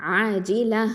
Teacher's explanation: அடுத்தது ஆஜில ஐன் ஃபத்ஹா அலிஃப் மத்து ஆ 2 ஹரக்கத்தை நீட்டணும். ஐன் அப்படிங்கிறத வசத்துல் ஹல்க்கு நடு தொண்டை எழுத்து. ஜீம் கெசரா ஜி இது வந்து நடு நாவு எழுத்து.